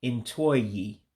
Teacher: the O in Oyi, you drop that. So when you put the two words together, Ntụ-Oyi, you actually combine them, kind of like contract them into one word.